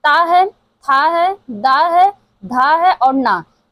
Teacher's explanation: ये जो त वर्ग है दंतव्य से उच्चारित होता है। इसका उच्चारण स्थान जो है वो दंतव्य होता है।